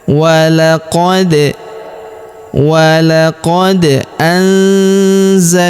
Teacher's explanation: Huruf da berharakat sukun. Maka kita pantulkan atau kita qalqalahkan ya.